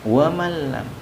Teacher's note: meleburkan nun mati terhadap huruf lam, seolah-olah nun matinya tidak dibaca tapi huruf lamnya yang dibaca. Wa malam, tapi tanpa dengan dengungan, dengung. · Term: idgham bila gunnah